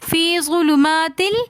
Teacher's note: فی ظلمات، فی ظلمات میں یہ مدہ ہے تو اس لیے ہم فی تھوڑا سا کھینچ کر پڑھیں گے. ظلمات 2 زیر کی تنوین کے بعد لام آ رہا ہے تو اس لیے ہم یہاں پر غنہ نہیں کریں گے، یہاں پر اظہار کا قاعدہ ہو رہا ہے.